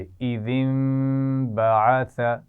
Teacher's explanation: نون ساکن کے بعد با ہے تو ہم میم سے اس کی آواز کو بدلیں گے اور غنہ بھی کریں گے